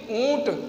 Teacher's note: जो चंद्रबिंदु का उच्चारण है मुख और नासिका दोनों से होता है · ऊंट बोलिए, ऊंट तो आवाज़ मुंह से भी निकल रही है और नाक से भी निकल रही है। आवाज़ मतलब ध्वनि, मुख से भी नाक से भी।